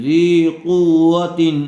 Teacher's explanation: قاف و پیش قاف کو پر کیجئے